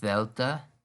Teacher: when you say Delta you make kind of a humming noise this is called a voiced consonant similar to the difference between Z and S there's a humming